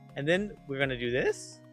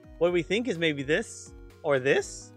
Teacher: Like your tone goes up, which makes you sound uncertain. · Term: uptalk